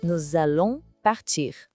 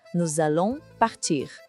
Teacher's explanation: O S da palavra nous se junta com o A de allons. E isso cria um som de Z. Fica nous allons partir. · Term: ligação